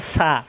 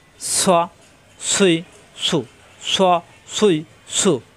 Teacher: সা কিন্তু নরম জিহ্বার আগা উঠে দাঁতের আগায় লাগিয়ে আর সৎ জিহ্বার আগা নিচে তাতে চাপ দিয়ে সোয়া সুই সু সোয়া সুই সু সিনের মতো যেন না হয়